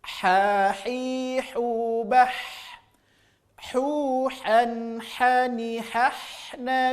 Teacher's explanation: Murni keluar dari tengah tenggorokan. · Maka murni huruf ha dan huruf a ini keluarnya dari wastul halqi, yaitu keluar dari tengah-tengah tenggorokan.